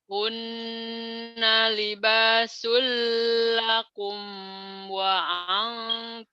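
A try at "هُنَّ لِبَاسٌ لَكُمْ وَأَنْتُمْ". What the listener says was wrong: Lakumnya idhar sapawi, jangan ditahan ya.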